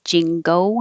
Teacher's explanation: when you say Jingo your lips will get small and then come back and make a w